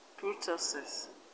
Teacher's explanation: And in kurtosis, the stress is on TO.